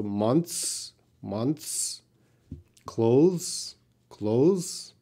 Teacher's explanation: everyone if you said three months everyone's can understand you because the th is so reduced so quiet that it's not so important to the sound of the word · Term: th sound